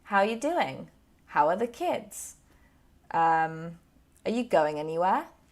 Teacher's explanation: when you ask your questions you go up at the end